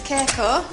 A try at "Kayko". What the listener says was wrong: There's no G in it.